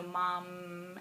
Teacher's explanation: you can really draw out the M at the end, so mom, and then you know that he's getting that last sound and kind of getting the concept of having that syllable that has the last sound on it.